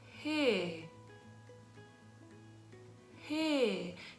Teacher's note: If you do it slowly, you'll feel that there's a release of air before the actual sound. · If you say a H, there's a puff of air that is naturally released just before the sound kicks in. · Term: aspirated onset